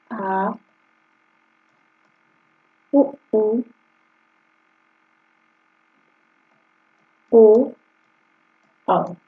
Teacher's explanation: जिन स्वरों के उच्चारण में जीभ का पिछला भाग काम करता है उन्हें पश्च स्वर कहते हैं।